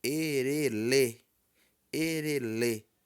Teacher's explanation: então o e o re são baixos e o l já vai lá pro alto ele não passa nem pelo Tom Médio já vai direto pro Tom alto